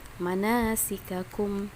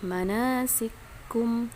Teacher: as-susi mengidghamkan, ya, kaf yang pertama pada kaf yang kedua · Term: idgham mithlain